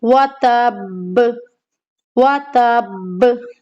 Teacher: अब यहाँ पे देखिए आयत खत्म हो रही है बा पे, बा को हमने साकिन किया, तो अब यहाँ पर हमें क्या करना है, सख्ती के साथ मजबूती के साथ कलकला करना है, क्योंकि यहाँ पर साथ में तशदीद भी है और जज़म भी। अब कैसे पढ़ेंगी, वातब, दोनों होठों को मिलाना है और दबाना है उनको आपस में।